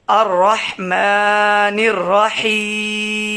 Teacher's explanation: کیونکہ یا ساکن سے پہلے لفظ کے نیچے زیر آ رہا ہے تو ہم یا مدہ کریں گے، یعنی ایک الف کے برابر اس کو کھینچ کے پڑھیں گے